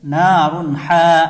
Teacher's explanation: یہاں تنوین کے بعد حروف حلقی میں سے ہا آ رہا ہے، تو یہاں پر غنہ نہیں ہوگا، اس کو ظاہر کر کے جلد پڑھیں گے۔